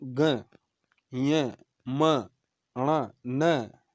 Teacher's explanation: तो यह का उच्चारण स्थान नासिका के साथ साथ तालु भी है, ग का नासिका के साथ कंठ, म का नासिका के साथ ओष्ठ, ण का नासिका के साथ मूर्धा और न का नासिका के साथ दंत भी उच्चारण स्थान है। तो इन्हें बोलते समय अपने वर्ग के साथ साथ नासिका का भी प्रयोग करना है।